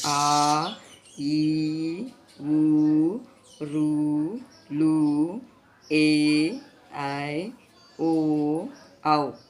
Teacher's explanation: రెండు మాత్రల కాలంలో ఉచ్చరించే అక్షరాలు ఆ ఈ ఊ ఋ లు ఏ ఐ ఓ ఔ వీటిని దీర్ఘాలు అంటారు.